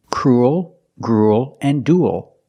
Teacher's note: three they're pronounced pretty much the same cruel cruel and dual they all have the u sound plus a dark l · They all have the oo sound plus a dark L, ool, like pool and cool.